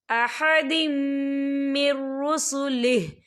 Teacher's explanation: تنوین کے بعد جو ہے میم آ رہا ہے اور میم جو ہے حروف یرملون میں سے ہے تو یہاں پر ادغام ہوگا اور ہم اسے غننے کے ساتھ پڑھیں گے